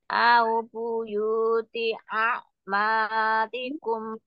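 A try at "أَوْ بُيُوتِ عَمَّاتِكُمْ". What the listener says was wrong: Bukan akma tapi amma. Amatikum.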